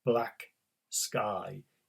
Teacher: to strong stresses one after the other black sky you can't say those two words without stressing both of them equally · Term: 2 strong stresses